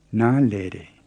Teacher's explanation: make sure you get a high na and a low le.